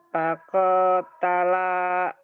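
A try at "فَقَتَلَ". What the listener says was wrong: Koknya pendek. Fakotala.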